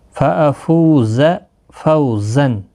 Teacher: فَأَفُو فو واو مدہ ہے، ایک الف کی مقدار کے برابر کھینچ کر پڑھیں گے. زا کو سختی کے ساتھ پڑھیں تاکہ زا ادا ہو جائے، یہ حروف صفیریہ کا حرف ہے